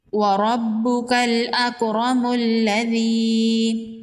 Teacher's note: اب یہاں پر دیکھیں، یہاں پر اگر وقف کرتے ہیں تو الذی پڑھیں گے، اگر یہاں پر وقف نہیں کرتے تو ملذی پڑھیں گے۔ میم کو لام کے ساتھ ملائیں گے۔ وَرَبُّكَ الْأَكْرَمُ الَّذِي، ایسے پڑھیں گے۔